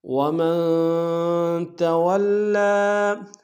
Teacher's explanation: ومن میں نون ساکن ہے، غنہ کریں گے، تولی میں واو کو لام کے سامنے کے شد ہے، زور دیں گے، کھڑا زبر ہے کہ اندار میں کھینچیں گے۔